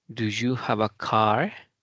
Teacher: al final ahora es en donde acentuamos o imprimimos mayor fuerza para este tipo de preguntas